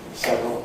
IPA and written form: ˈsevrəl (several)